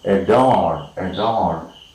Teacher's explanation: It's a weak vowel, and syllables with this particular weak vowel does not take the primary stress.